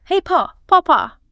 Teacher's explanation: Pool, pull, and Paul. In broad Cockney, because you aren't lifting the tongue for the L and you're rounding the lips, they all become something like paw or poo. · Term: dark L